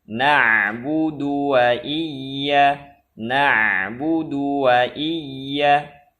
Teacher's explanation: dhammah dal pada kalimat na'budu tanpa memanjangkannya. Satu harokat.